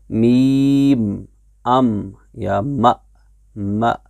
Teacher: दूसरा है मीम का मखरज। मीम होंठों के खुश्की वाले हिस्से से अदा होता है